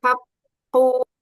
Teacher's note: Domahnya sempurnakan pada qaf.